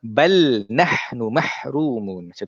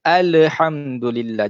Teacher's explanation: tahan lidah kita daripada melantunkan huruf lam